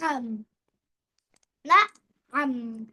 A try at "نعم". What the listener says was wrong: You don't have to break it in between. You just have to tell it smoothly. نعم.